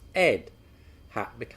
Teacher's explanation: we drop the h sound entirely